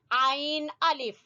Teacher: عین گلے کے درمیان سے نکالیں گے